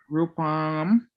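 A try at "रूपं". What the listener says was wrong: No M.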